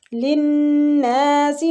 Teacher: نون مشدد پہ غنہ کریں گے اور کھینچیں گے